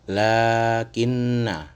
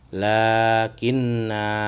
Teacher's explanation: Jadi, apabila ditemui tanda bulatan ini, maka ada dua cara membacanya, yaitu ketika dilanjutkan di wasol, maka dibaca pendek. Namun ketika di waqaf atau berhenti, dia harus dibaca panjang. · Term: sifir mustatil